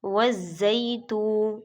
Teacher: زبر یا زئی، والزئی، تا پیش و تو۔ اب یہاں پر یا کے اوپر یا لین ہے اور آگے تا پیش و تو واو مدہ ہے، دونوں کو کھینچ کر پڑھیں گے